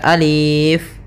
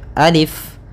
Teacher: untuk alif ini la yumaddu, tidak dimatkan, tidak dipanjangkan, sehingga jangan dibaca alif, tapi hanya pendek saja alif.